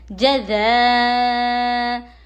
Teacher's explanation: حمزہ حلق کے نیچے والے حصے سے ادا ہوتا ہے